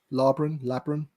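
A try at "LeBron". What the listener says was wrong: It's an N. But you sound like you're starting it off with an L.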